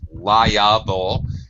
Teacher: there's a y sound between the I and the A